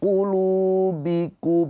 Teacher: panjang dua harakat karena ada pemanjangnya yaitu wau sukun. Wau sukun sebelumnya harakatnya dommah. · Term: Mad thobi'i